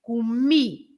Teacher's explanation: the words that finish with an I or an IS, as in this case, you stress the end.